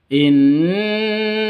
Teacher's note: non tasydid, berdiri sendiri, gunnah musyaddadah, dengung dua ketukan.